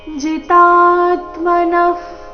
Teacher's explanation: ಜಿ ರಸ್ವ ತಾ ದೀರ್ಘ ಬಂದು ನಂತರ ಆಘಾತ ವಿಸರ್ಗದ ಉಚ್ಚಾರಣೆ ಅರ್ಧ ಫ ರೀತಿ ಬರಬೇಕು.